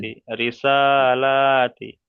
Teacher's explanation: সা আর লা এই দুই জায়গায় টান হবে